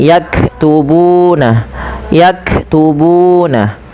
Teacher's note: Ak ak maka di sini yaktubuna yaktubuna dan panjangkan bu sepanjang dua harakat karena ia mad thabi'i